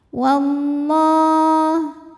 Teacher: lam pada lafaz Allah dibunyikan secara tafkhim karena sebelumnya berbaris fathah maka dibacanya tebal